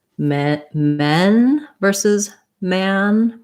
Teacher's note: So when I do, for example, men versus man, my mouth is a little more open for the ah of man than it is for the eh of men